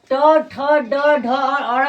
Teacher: ट, थ, ड, ढ, और ण का उच्चारण मुर्दा से होता है। इसे हम लोग ट वर्ग कहते हैं।